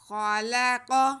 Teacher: قاف پہ تینوں پہ زبر ہے، تینوں کو بالکل نہیں کھینچنا، خا کی آواز کو اور قاف کی آواز کو موٹا کرنا ہے، کیونکہ یہ حروف مستعلیہ ہیں